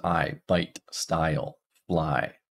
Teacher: it starts at a and then it moves to the E position as it closes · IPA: [aɪ]